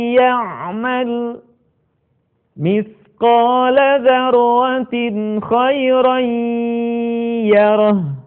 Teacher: akan lebih sempurna kalau sebagian suara kita kita keluarkan melalui rongga hidung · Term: gunah